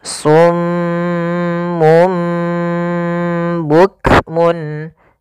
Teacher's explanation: Kemudian karena ia bacaan iqlab, maka di sini mimnya dianggap kita matikan. Maka pertama ditahan dulu suara m-nya karena dibacaan gunnah. Kemudian ketika lafal mum itu langsung matikan di sini dan ditahan suara gunnahnya.